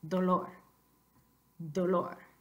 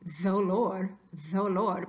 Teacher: When you have a D at the beginning of a breath group, like we do here, which is also the beginning of a word, it's not fricative, it stays occlusive.